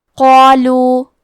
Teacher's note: قاف کو ہم زبان کے جڑ اور تالوں کے نرم حصے سے پڑھیں گے. قاف حروف تفخیم میں سے ہے تو ہمیں قاف کو اور اس کے بعد مد الف کو دونوں کو تفخیم سے مطلب بھاری آواز میں پڑھنا ہے.